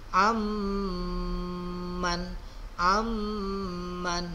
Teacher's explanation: Nah, didengung ya, nun mati bertemu mim.